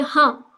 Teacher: that ha is nasalized